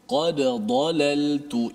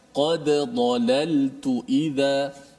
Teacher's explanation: Hati-hati kalau ada dal yang mesti kita izharkan, matikan dal tu, qalqalah. Jangan qad dalal, jangan masukkan dal dalam dad. Dal itu kena matikan.